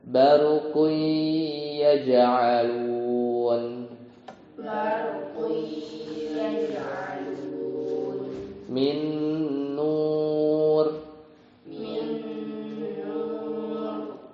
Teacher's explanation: nun sukun atau tanwin itu ketemu huruf idghamnya itu yang digunah ya.